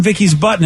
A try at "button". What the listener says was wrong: Button. it almost sounded like butt.